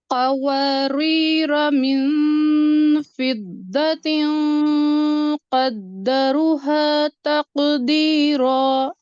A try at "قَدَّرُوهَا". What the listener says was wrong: قوارير پہلا والا را باریک، قدروها واو مدہ ڈراپ کر دیا آپ نے، دوبارہ سے پڑھیے.